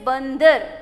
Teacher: तो अन जब हम बोलते हैं तो अन बोलते समय हमारी जो ध्वनि होती है हमारे नाक से निकलती है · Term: अनुस्वार